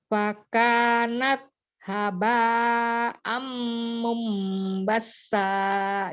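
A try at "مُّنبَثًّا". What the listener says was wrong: Iya, itu bukan huruf sin, bukan basa, tapi basa. Hurufnya sa ya. Tidak ada safir, tidak ada tafasi di huruf tanya, hanya hamzah saja. Fakanat haba, haba ya, bukan habba.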